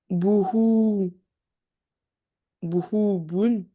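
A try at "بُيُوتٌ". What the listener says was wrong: Alors, juste la deuxième lettre, tu t'es trompé. Bou, avec deux points en bas, c'est quoi? Le ya.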